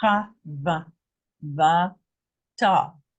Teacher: the cha is very fast because it is the shva with the patah, which is the shortest rendering of the a